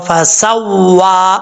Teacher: जब वाओ पढ़ते वक्त होंठ गोल करके पढ़ेंगे, सही मखरज से अदा करेंगे तो पढ़ा जाएगा फसव्वा, सीन में सीटी, ठीक है।